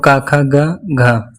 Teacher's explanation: कंठ में क वर्ग आता है